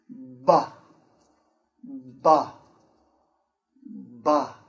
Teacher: We're going to make this sound, the B sound. So first we stop the air behind our lips. Our lips are closed. We stop the air. And then we open our lips and release the air.